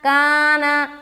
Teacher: کا میں الف مدہ کرے، نا کو جلدی چھوڑیں گے